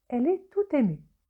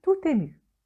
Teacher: On fait la liaison, c'est-à-dire on relie la consonne finale T du mot tout, habituellement non prononcé, avec le mot suivant ému, qui commence par la voyelle E.